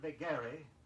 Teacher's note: the accent is usually placed on the second syllable